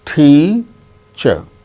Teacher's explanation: Out of these two syllables, the first syllable is stressed. That gains importance, more importance than the other syllable.